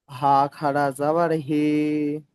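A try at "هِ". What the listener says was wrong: খাড়া যাওয়ার বলছেন, দেখেন হা খাড়া জের রয়েছে।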